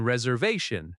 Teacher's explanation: the stress is on va in reservation